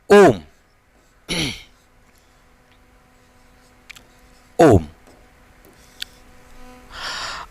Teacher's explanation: प्लुत में जो है तिगुना समय लगता है